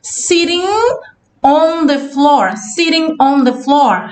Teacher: Vê que ela não fala o G, tá? A gente não fala sitting. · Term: connected speech